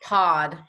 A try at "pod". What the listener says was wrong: She's saying it a little bit like pod for some reason, like P-A-W-D. P-O-D. Pod. pod.